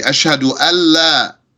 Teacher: You know there's N in there because we merged the noon with the lam